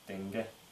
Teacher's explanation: отображает себе четыре фонемы Давайте первая фонема как в русском г то есть слегка глухая но взрывная г передняя смыкание на этом уровне в середине языка и середина г взрывная